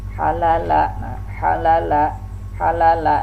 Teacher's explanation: Dan lam ini termasuk jahar ya, tidak ada udara atau napas di saat kita melafalkan huruf lam.